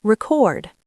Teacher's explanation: As a noun, the stress is on the first syllable, record. As a verb, the stress is on the second syllable, record.